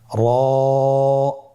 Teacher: জিহ্বার আগার উল্টা পিঠ তার বরাবর উপরে তালের সঙ্গে লাগিয়ে উচ্চারিত হয় · র হরফটি এখানে আমরা পর উচ্চারণ করব। মোটা করে উচ্চারণ করব। এবং র হরফটি এক আলিফ টেনে পড়ব।